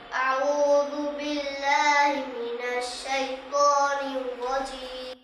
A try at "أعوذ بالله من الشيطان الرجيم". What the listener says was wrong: হি মিনাশ হা স্পষ্ট উচ্চারণ করব, ঠিক আছে ইনশাআল্লাহ।